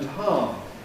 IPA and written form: haːm (harm)